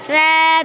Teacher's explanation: ثا د ژبې سر او برني دوو غاښونو من سره ولګي نو هغې نه ثا ادا کېږي